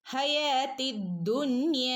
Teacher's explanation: രണ്ടനക്കം ഇവിടെ നീട്ടിക്കൊടുക്കണം കേട്ടോ, അലിഫ് മദ് വന്നിട്ടുണ്ട്